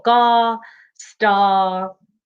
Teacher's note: all of these words there's no r at the end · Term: lazy r